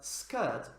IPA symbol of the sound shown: sk